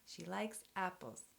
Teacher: SHE will be unstressed -- it's a pronoun. · The first syllable in APPles is strong, and the second one is weak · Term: sentence stress